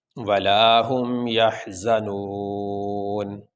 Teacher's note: تو یہاں پہ آخری حرف ہے نون، اس کے اوپر ہے زبر۔ وقف کرنے کی صورت میں ہم نون کو ساکن پڑھیں گے، اس کے اوپر جو زبر ہے وہ نہیں پڑھیں گے۔